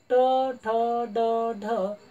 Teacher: जिभेचा मागील भाग खाली दबतो समोरील शेंडा फक्त वरती होतो आणि मुखातील वरील भागाला दातांच्या थोडा मागे स्पर्श करतो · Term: मृदन्य